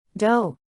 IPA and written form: doʊ (Dough)